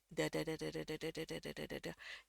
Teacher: pada saat kita ngucapin da da da itu tadi, eh, dia hampir nggak ada anginnya yang keluar. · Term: flap T atau flap D